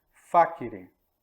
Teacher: O acento está no A, é uma palavra proparoxítona.